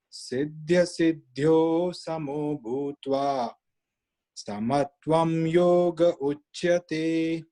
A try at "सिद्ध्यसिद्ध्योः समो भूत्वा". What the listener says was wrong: This one, the third pada, siddhya siddhyos, it is a mahaprana, it is a lot of air should be coming out with more emphasis. It is like siddhya siddhyo samo bhutva bhutva bhutva